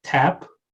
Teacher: for the word tap, aspiration applies, but vowel lengthening doesn't apply, and then you get the phonetic representation with that aspirated T.